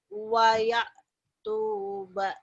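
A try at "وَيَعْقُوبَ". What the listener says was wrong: Wa Yakub. Ku bukan tu ya. Titiknya benar dua tapi ada kepalanya. Yakub.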